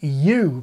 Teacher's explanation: when I say the sound U, I don't mean oo, I mean U, beginning with the sound Y. The phonetic symbol for Y is a J, as in Jägermeister.